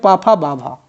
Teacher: इनके उच्चारण में ओष्ठ आपस में मिलते हैं। · प वर्ग ओष्ठ होता है